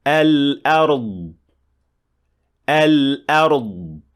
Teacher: Releasing the air when lod is at the end of the word causes the lod to have qalqala, which is a wrong practice when it comes to the lod.